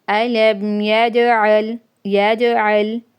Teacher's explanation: okay, اظہار شفوی، علم، یج، جیم، قاف تو با جیم دال، یہ جیم قلقلہ میں سے آ رہی ہے تو اس لیے قلقلہ ہوگا